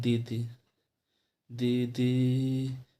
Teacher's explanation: जैसे हम ई का उच्चारण करें, ई, जैसे हम बोल रहे हैं दीदी, दीदी, तो ई आ रहा है। तो ई तो पहले छोटे से चालू हो रहा है, लेकिन बाद में चल के ई बड़ा हो जा रहा